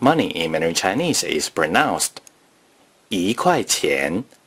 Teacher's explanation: When saying the number 1 before a measure word that is the fourth tone or the neutral tone, the number 1 is pronounced yí.